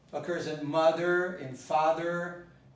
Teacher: So the ending occurs in mother, in father. It's always a schwa.